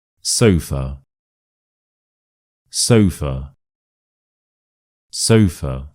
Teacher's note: [Laughter] And the schwa is of course here. So we stress the first syllable.